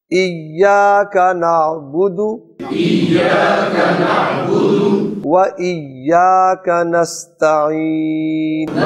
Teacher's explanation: دال پر پیش ہے، کہیں اس کو لمبا کر کے نعبدو نہ بن جائے